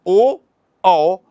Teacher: ओ, औ, ये कंठ और ओष्ठ से